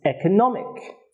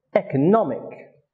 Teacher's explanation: the second syllable when the suffix ick is added it becomes economic which is an adjective and it has stress on the third syllable